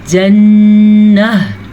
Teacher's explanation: जन्नह पढ़ते हुए आखिर में हा की आवाज़ आनी चाहिए। जब वक्फ आ जाए तो गोलता हा बन जाती है